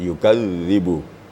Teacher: Jadi yang jadi masalahnya waktu tasdid. Di zal apabila bertasdid tetap sifatnya lembut gitu. Ya, sifatnya tetap ada.